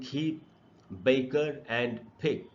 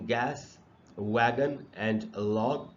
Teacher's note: is the roof of the mouth just behind the हार्ट पैलेट यानी कि जब हम अपनी जीभ को सॉफ्ट पैलेट की तरफ रेज करते हैं ऊपर उठाते हैं तो ये साउंड्स बनते हैं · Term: वलर साउंड्स